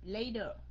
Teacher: Mỹ thì nó đọc âm T thành âm D, thường thường là như vậy.